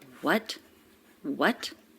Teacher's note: notice the intonation goes up what what she's surprised